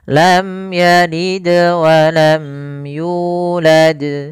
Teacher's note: Di sini ada bacaan qalqalah, yaitu suara dalnya dipantulkan.